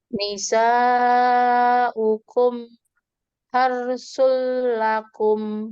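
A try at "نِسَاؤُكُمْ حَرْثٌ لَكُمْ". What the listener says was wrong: Jangan dijedah mimnya. Kan tadi mimnya dibacanya memang izhar, dibacanya dengan jelas. Tapi kita lihat sifat huruf nunnya itu, mimnya itu mengalir sebagian, tawasud atau bainiyah. Jangan dijedah, tapi dialirkan, disambungkan. Nisaukum harsul lakum.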